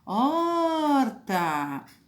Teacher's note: Onde eu perdi mais tempo? No or. Então, é penúltima, penúltima. Então, é paroxítona.